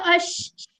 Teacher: जुबान ऊपर लगती नहीं है लेकिन ऊपर जो तालू है उसके करीब आ जाती है। अश अश ठीक है अश ऐसी वाली आवाज भी आनी चाहिए। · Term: शीन